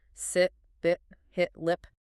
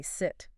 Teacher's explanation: Your tongue stays relatively high, but the duration of the sound is actually what matters most here. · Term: short I